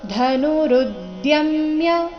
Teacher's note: ಧ ಮಹಾಪ್ರಾಣ ರಸ್ವ ಇದೆ